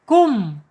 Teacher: Selain menghadapi huruf ba dan huruf mim, bacanya idhar syafawi. Mimnya harus dibaca jelas.